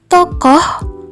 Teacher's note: Jadi, fonem O pada kata tokoh dibaca tidak lepas karena pada saat penyebutan fonem O tersebut, bunyi O langsung tergeser oleh alat ucap menuju faringal atau yang menyempitkan faring sehingga bunyi O menyatu dengan bunyi H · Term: suku kata tertutup